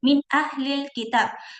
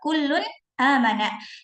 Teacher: Yang pertama ketika bertemu dengan hamzah. Contohnya min ahlil kitab min nun sukun bertemu dengan hamzah dibaca jelas. Min ahlil kitab.